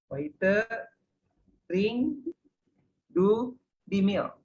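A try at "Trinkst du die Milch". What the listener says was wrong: Trinks. Ada ST belakangnya, trinks. Kalau saya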